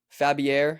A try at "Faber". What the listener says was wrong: There's no I in there. There's no I in the team.